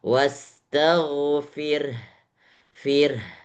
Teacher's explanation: Jadi ada hembusan yang terakhir.